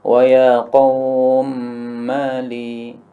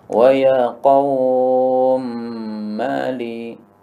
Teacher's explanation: Boleh dibaca dengan panjang biasa yaitu 2 harakat. Boleh juga dibaca panjang tengah-tengah yaitu 4 harakat. Boleh juga dibaca panjang dahsyat yaitu 6 harakat.